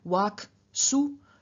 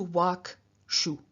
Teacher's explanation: the Ruki rule, which says that after ruki, an s changes into a sh, we then get from wak su to wak shu.